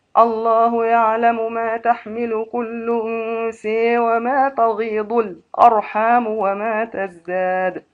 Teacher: حمزة أنثى بالإمالة مع السكت في القلب. الله يعلم ما تحمل كل أنثى وما تغيض الأرحام وما تزداد.